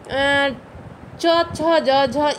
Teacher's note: जो हमारे मुख का ऊपर का जो भाग होता है, मुख के ऊपर का जो भाग, जब जीभ जो है मुख के ऊपर के छत से, ऊपर के भाग से जब टच करे ना, वो तालु कहा जाता है। और अब च बोलेंगे ना तो आपका जीभ है जो ऊपर तालु में सटेगा, तालु में टच करेगा, तो उसे हम च छ ज झ इया को तालु उच्चारण स्थान हमारा तालव्य तालु माना जाएगा।